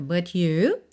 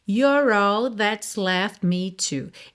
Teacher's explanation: Esse left me você quase não ouve o T porque sendo uma consoante oclusiva, pode aparecer mais, menos ou nada.